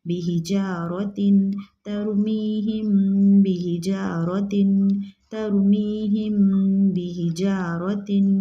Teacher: मीम साकिन के बाद बा आए तो इक्फ़ाए शफ़वी होगा, ठीक है, गुन्ने के साथ इक्फ़ा करेंगे।